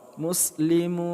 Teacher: Mu kita panjangkan 2 sampai dengan 6 harakat mad arid lis sukun.